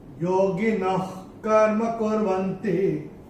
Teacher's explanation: तीसरे चरण में ये जो विसर्ग हम यहां देख रहे हैं न के साथ, विसर्ग के बाद का जो अक्षर है वो है क, और विसर्ग के बाद अगर क या ख आता है तो विसर्ग का उच्चारण होता है ख, आधा ख फ्रॉम द एपिग्लॉटिस